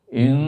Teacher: Di inna itu dibaca gunnah ya, dibaca gunnah. Gunnah artinya berdengung, dengung.